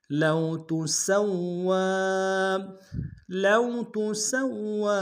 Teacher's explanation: لام کو واو کے سامنے لائیں گے واو لین بغیر کھینچ پڑیں گے